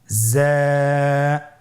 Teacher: যা হরফটির মাখরাজ আপনারা দেখতে পাচ্ছেন, জিহ্বার আগা সামনের নিচের 2 দাঁতের পেট ও আগার সঙ্গে লাগিয়ে উচ্চারিত হয়।